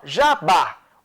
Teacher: o Bá é mais forte, é uma oxítona, termina em A, tem acento.